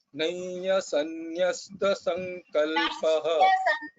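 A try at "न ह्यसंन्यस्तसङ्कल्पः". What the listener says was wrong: nahya, not nayya, nahya sanyasta. Nahya, not nayya, it is nahya, not nayya.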